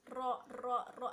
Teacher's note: Untuk huruf ro ini cara pengucapannya sama, makronya itu dengan huruf lam sama nun, yaitu dengan cara ujung lidahnya itu ditempelkan ke gigi seri bagian atas. Ro dan ada getaran gitu di sana.